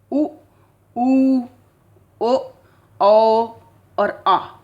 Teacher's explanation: जीभ का जो पिछला भाग है वो सामान्य स्थिति से थोड़ा सा ऊपर उठता है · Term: पश्च स्वर